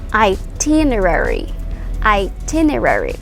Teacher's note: So the stress is on the second syllable, T. Itinerary.